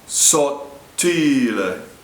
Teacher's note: I'll say it you say it let gel in Saudi lay the first T is imploded the tongue touches the roof of the mouth and stops the second T is pronounced